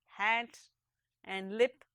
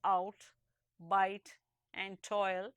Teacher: But if you say the words out, bite and toil, you will hear that the vowel sound of each, though restricted to one syllable, is composed of two different kinds of sound. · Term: diphthong